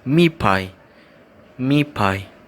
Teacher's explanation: the T sound is adopting the P sound